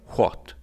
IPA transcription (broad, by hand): xwat